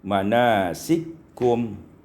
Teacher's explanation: idghamul kaf fil kaf diidghamkan kaf pada kaf dengan idgham kamil sehingga kita baca manasikum.